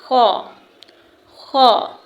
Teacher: جب زبان کا درمیانی حصہ اوپر کے تالو سے لگے گا تو خو ادا ہوگا